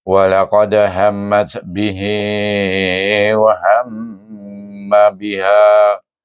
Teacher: mim bertasydid, wajib didengungkan dengan dengung 2 harakat